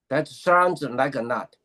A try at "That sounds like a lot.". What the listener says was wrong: No, because I'm hearing not, lot, lot. That sounds like a lot.